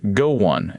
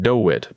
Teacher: After rounded vowels like oo and oh, we add a small w. So, go on sounds like go won, and do it sounds like doe wit. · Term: hidden w